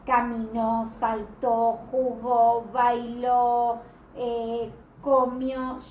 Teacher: las palabras agudas, es decir, aquellas que tienen la sílaba tónica en la última sílaba, llevan tilde cuando terminan en NS o vocal.